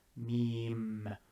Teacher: with meme you start with the lips open and it ends with the top lip and the bottom lip closing on one another meme the m sound if you are pronouncing it in english